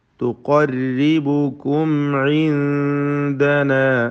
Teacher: റായിന് കസ്റ അതിനാൽ തർക്കീഖാണ്, നേർപ്പിച്ച് ഓതുക.